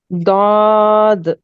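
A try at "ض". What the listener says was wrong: नहीं थोड़ा सा और मोटा करो, हल्का सा ।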